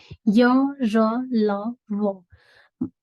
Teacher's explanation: अब अंतस्थ व्यंजन, इनका उच्चारण मुंह की छत और जीभ के बीच से होता है, इसीलिए इसको अंतस्थ, अंदर से, बीच से, है ना, कहा जाता है।